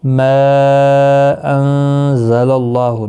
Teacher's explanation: ما مد منفصل ہے تین الف کی مقدار کے برابر کھینچے